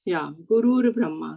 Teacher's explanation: Visarga will be changed into Rakaraha.